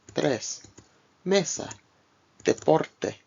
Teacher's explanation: E, like the E in they, but without the Y glide.